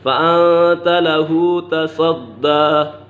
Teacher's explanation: صاد حرف مستعلیہ میں سے ہے، اسے پور پڑھیں گے